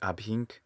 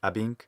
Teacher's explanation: first syllable he says sounds more like abhinc instead of abink i just make that h silent when i speak normally · I just make that H silent when I speak normally. But you could add, you could say abhink, but the first syllable ought to be short.